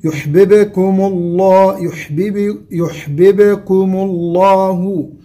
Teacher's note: الباء الثانية في يحببكم باء ساكنة مقلقلة